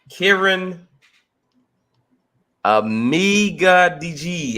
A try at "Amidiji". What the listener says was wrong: Amidiji. You had to, you basically sounded it out correctly. You just didn't put the emphasis on the right syllable.